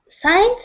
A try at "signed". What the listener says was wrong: Signed, yes.